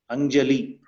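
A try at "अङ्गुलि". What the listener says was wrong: Anguli. Right. It is ga, not Jew. Anguli.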